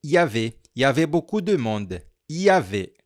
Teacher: É como se não tivesse esse il.